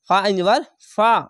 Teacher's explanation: আইনটিকে একটু মোটা করে গলা চিপে পড়বেন